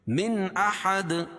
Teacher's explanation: نون ساکن کے بعد حروف حلقی کے 6 حرفوں میں سے حمزہ آ جائے گی، اس میں اظہار کر کے پڑھیں گے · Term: اظہار حلقی